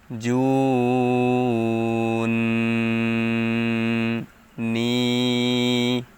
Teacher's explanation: টান দেওয়ার পরে এই নুন কে ধরছে এই তাসদিদের কারণে এবং নুনের উপর যেহেতু তাসদিদ আছে তাই এখানে গুন্না করতে হবে